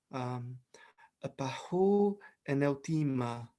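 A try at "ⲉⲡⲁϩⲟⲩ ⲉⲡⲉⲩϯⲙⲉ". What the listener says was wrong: Yeah, you pronounced this letter differently. I heard an N before, but I might have just misheard you.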